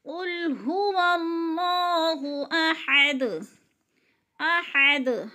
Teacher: احد، ہاں حلق سے نکالیں گے، باریک ہاں ہے۔ احد، وقف کی صورت میں دال پر قلقلہ کریں گے، یعنی دال کو ہلا کر پڑھیں گے۔